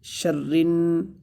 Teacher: را کو سختی سے پڑھیں گے اس لیے کہ اس کے اوپر تشدید ہے